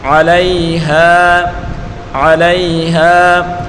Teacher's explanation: ہاں الف زبر ہاں الف مدہ ہے. اس کو ایک الف کی مقدار کھینچ کر پڑھیں گے.